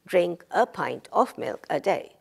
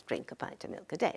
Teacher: a pint of milk a day right so what happens is the function words are attaching to the main word to the left